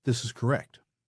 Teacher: a declarative downward inflection, a statement that ends with a period. It sounds final.